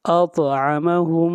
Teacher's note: طا کے اوپر قلقلہ ہوگا، آواز کو ہلائیں گے